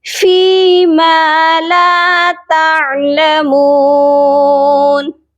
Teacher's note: عین کی آواز حلق سے آئے گی